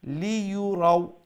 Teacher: লি লম্বা করবা না, লিও বাট্টি, ইউও বাট্টি, রাও বাট্টি